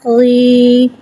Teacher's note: یا کو ایک الف یعنی 2 حرکات کے برابر کھینچ کے پڑھیں گے۔ یا ساکن سے پہلے زیر آ رہا ہے، یا مدہ ہو رہا ہے اور زیر کو نیچے گرا کے ادا کریں گے۔ حرف مدہ کو ایک الف یعنی 2 حرکات کے برابر کھینچ کے پڑھیں گے۔ · غین کو ایک الف یعنی 3 حرکات کے برابر کھینچ کے پڑھیں گے۔ غین حرف مستعلیہ ہے، لہٰذا اس کی آواز حلق سے موٹی ادا ہوگی۔ یا کو ایک الف یعنی 2 حرکات کے برابر کھینچ کے پڑھیں گے۔